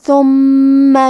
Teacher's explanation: دو حرف کے برابر میم کو پڑھنا ہے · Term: تشدید